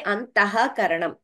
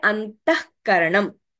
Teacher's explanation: whenever a visarga is followed by ka or kha, we get a pronunciation, we get a jihvamuliya